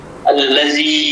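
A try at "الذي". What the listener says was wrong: الذی میں زال. نہیں سختی آ رہی ہے. پہلے زبان باہر نکال کے زبان کو اگلے دونوں دانتوں کی ٹپ پہ لگانے کے بعد آواز شروع کرنی. الذی.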